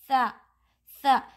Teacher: Tip of the tongue touches the edges of the front teeth.